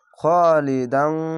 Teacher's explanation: খালিদান না বলে খালিদাং, এখানে ইকফা গুণা বাংলা আনস্কার মতো।